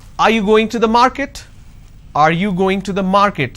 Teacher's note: so when i say are you going to the market there is a rising tone